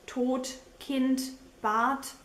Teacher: In German, D is often pronounced as T as well